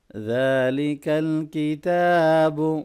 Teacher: ذال کو نرمی سے پڑھیں گے، کھڑی زبر ہے اس کو لمبا کریں گے